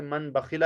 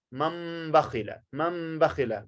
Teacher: गुन्ना और इख्फ़ा के साथ इसकी अदायगी होगी मम बखिला · नून साकिन या तनवीन के बाद बा आ जाए तो नून साकिन और तनवीन को मीम में बदलना है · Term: इक़लाब